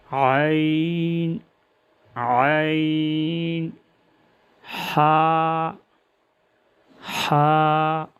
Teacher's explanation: تیسرا مخرج وسط حلق یعنی حلق کا درمیانی حصہ، اس سے عین اور حا ادا ہوتے ہیں۔ عین اور حا، حلق کا درمیانی حصہ، عین عین، حا حا۔